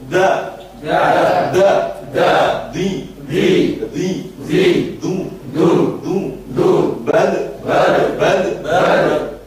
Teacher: Tidak boleh ada desisnya, sama dengan huruf ja. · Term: dal